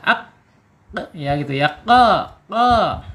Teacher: di pangkal lidah ya lidah yang paling pangkal naik dia ya menekan lawannya yang ada di atas yaitu langit-langit yang mempunyai anak lidah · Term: qop